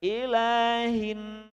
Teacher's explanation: Tahan di hidung dua ketukan. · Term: Mim nun berwarna